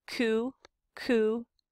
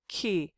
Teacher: When we have the when we produce it with a front vowel like e, the velar, instead of pronouncing it with the tongue at the very far back of the roof of your mouth, it moves a little forward because we're anticipating going forward for the front vowel